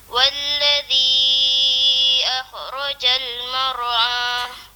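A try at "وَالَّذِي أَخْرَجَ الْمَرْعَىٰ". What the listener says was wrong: Walladhi akhrajal mar'a. Bagi ada geseran sikit. Akhraja.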